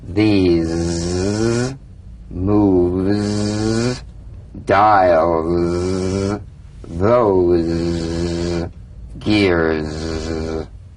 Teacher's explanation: feel a smooth, strong vibration in the teeth and in the front of the tongue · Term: Z sound